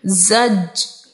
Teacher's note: جیم حرف قلقلہ ہے ساکن ہے خوب قلقلہ ظاہر کریں گے